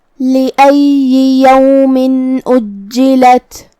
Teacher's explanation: یومن اجلت. کلمت اجلت میں جیم پہ تشدید ہے، لہذا 2 حرف کے برابر ہمیں جیم کو پڑھنا ہے